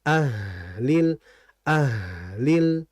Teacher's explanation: H mengalir disertai dengan hembusan udara atau biasa kita kenal [berdehem] dengan istilah huruf hams ya.